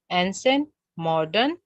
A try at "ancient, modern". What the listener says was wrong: Absolutely. Thank you so much.